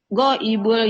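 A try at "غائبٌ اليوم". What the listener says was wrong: Nggak boleh goibul. Ini kan goibun bertanwin ya, Bu ya. Nah, kalau ada tanwin ketemu alif lam, kalau ada tanwin ketemu dengan alif lam, tidak boleh kita langsung sambung goibul yaum. Tapi harus goibun al yauma atau goibunil yauma, begitu.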